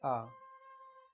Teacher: ओष्ठ की स्थिति के आधार पर उदासीन स्वर कहलाता है आ, जिसमें ओष्ठ हरकत नहीं करता है, आ, इसलिए इसको उदासीन कहते हैं।